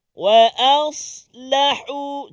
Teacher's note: Jadi alif tu ataupun hamzah tu dengan huruf lam, make sure pastikan dia tak bunyi tebal.